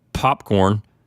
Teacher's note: your lips are closing and stopping the air until you release them